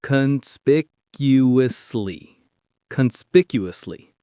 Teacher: The big stress is on that second syllable.